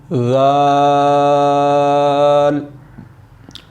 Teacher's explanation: زبان کی نوک جب آپ کے اوپر والے سامنے والے دانتوں کی کنارہ سے لگے تو ذال ادا ہوتا ہے